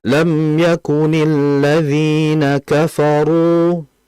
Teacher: Kafaru bukan kafaru. Kalau kafaru itu masih tipis, belum dinaikkan itu pangkal lidahnya. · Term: rnya